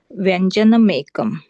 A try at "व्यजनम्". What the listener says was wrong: व्यंजन नाही, व्यजन आहे.